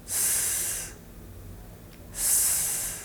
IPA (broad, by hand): s